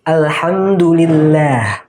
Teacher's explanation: Seharusnya lam di situ dibaca jelas, sukunnya jelas dibaca mati.